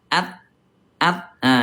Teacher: ta ada di pangkal gigi seri atas